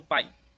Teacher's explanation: Percebe que a gente faz uma entonação maior nesse A bem aqui, ó. Então, bem aqui vem ser minha vogal e o I, minha semivogal.